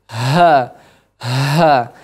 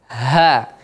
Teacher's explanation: namun yang benar adalah dia murni dari pangkal tenggorokan pangkal tenggorokan